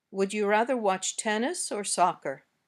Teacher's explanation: the intonation goes up on the first choice and down at the end